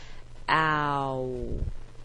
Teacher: is that there are two letters and we hear two sounds there's sort of a slide from the first vowel to the second one